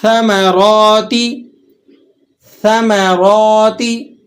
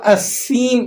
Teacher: بغیر سیٹی کے آپ نے اس کو پڑھنا ہے، اس کے اندر سیٹی نہیں نکلے گی۔ اس بات کا خصوصی طور پر دھیان رہے کہ سا میں سیٹی نہیں نکلے گی